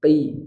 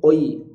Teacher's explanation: Nah, maka dalam pengucapan huruf tebal di huruf qaf, kita bantu dengan angkat rahangnya ke o ketika berharokat fathah. Kalau dia berharokat kasroh, maka huruf qaf berlaku namanya tafkhim nisbi, tebal yang lemah, tidak mengangkat rahang. Jadi rahangnya boleh langsung di i, qi, tidak menjadi seperti huruf tebal yang lain, oi, tidak, tapi qi.